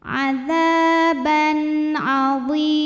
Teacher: Adzaban, ban ada hukum izhar halqi sebab ada tanwin fathah yang menghadapi huruf halqi atau huruf tenggorokan yaitu ain, maka tanwin dibaca jelas.